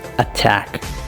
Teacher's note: The aspirated T, which occurs at the beginning of a stress syllable and comes with a strong puff of air.